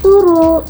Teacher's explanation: ada proses penyederhanaan karena bunyi b di tengah hilang dan vokalnya diseragamkan jadi u